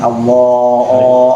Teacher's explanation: Tebal. Itu alif yang dibaca tebal. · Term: alif al-mufakhamah